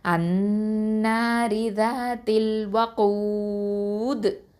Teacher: இந்த தால் கெஸ்ரா வந்து சுக்கூனா மாற்றுறதுனால கல்கலா குப்ரா கொடுப்போம். அது மட்டும் இல்லாமல் மத்தல் ஆறுதல் சுக்கூன் சட்டம்.